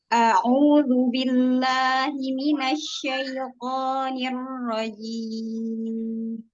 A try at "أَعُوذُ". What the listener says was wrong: Ain coba makhrajnya. Kuatkan lagi sandaran makhraj jim.